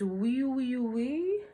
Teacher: So it's that wee, wee, wee, wee, wee. Notice there's very little difference between my E and my oo, and I use the W sound to transition back and forth between the E and the oo. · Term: forward placement